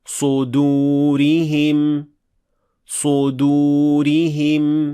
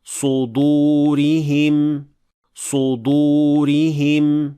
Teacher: >> To'rtinchi keng tarqalgan xato dal yug'on tovishdan keyin kelganda kuzatiladi. Ayrim o'quvchilar uni ham uyug'on talaffuz qilishadi. Bu esa noto'g'ri. Chunki dal aslida ingichga tovushli harfir.